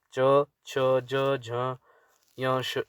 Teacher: जैसे जैसे गले से निकलते हैं, जैसे गले से उच्चारित है क, ख, ग, घ, ढ। तालव्य से जो तालू से निकलते हैं, मुंह मुख के हमारे ऊपरी भाग से निकलते हैं, उसमें आते हैं च, छ, ज, झ, य, श, य, श।